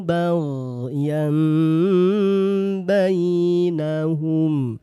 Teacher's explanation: Yang ditukar adalah bunyi n pada tanwin atau nun sukun. Ketika dia berjumpa dengan huruf ba tukar dengan bunyi M. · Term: iqlab